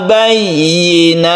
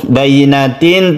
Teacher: ini harus jelas kasrohnya, suaranya yi, bukan i tapi yi, bukan bayinatin tapi bayinatin.